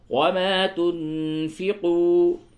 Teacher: نون ساکن کے بعد فا ہے، اخفا کیجئے